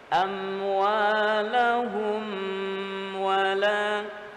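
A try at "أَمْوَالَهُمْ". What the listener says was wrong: Nah, ini contoh yang tidak benar secara kaidah. Jadi cukup satu ketukan.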